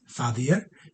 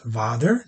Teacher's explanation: Notice again, F and V, very close. The only difference is F unvoiced, V voiced